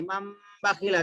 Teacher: اور اقلاب میں کیا کرتے, تنوین نون ساکن کے بعد میں با ہے تو نون کو میم سے بدل کے پڑھتے